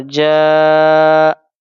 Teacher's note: حرف مدہ کے بعد حمزہ اسی کلمہ میں ہو تو مد متصل یعنی کہ مد واجب یہاں پہ کھینچ کر پڑھنا واجب ہوگا